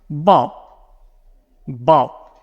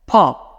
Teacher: it needs to have this little burst of air before the O